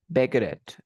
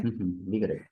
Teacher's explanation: The T between two vowels sounds like an R.